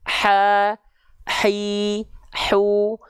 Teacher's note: Tuh, huruf H kecil punya sifat hams, tapi sesuai dengan dasarnya, mengalir nafas.